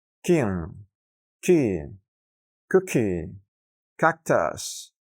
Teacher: cuando encontremos este sonido en la posición inicial de sílabas acentuadas, deberemos soltar siempre algo más de aire al pronunciarlo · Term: K sound